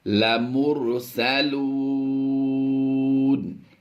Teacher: واو مدہ کے بعد سکون عارضی ہے تو مد عارض ہوگی